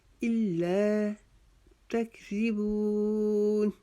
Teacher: تا کو بھی باریک پڑھیں گے، کاف کو بھی باریک پڑھیں گے ، رال کو نرمی سے ادا کریں گے، اس کو تکذیبون